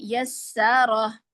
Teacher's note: یسا سین کو باریک رکھیں